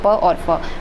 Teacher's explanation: इसमें कंपन नहीं होता है, बोलते टाइम में कंपन नहीं होता है, वो अघोष में होते हैं